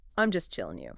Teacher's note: I am is I'm chilling becomes chilling. Dropping that final G sound instantly makes it sound more relaxed.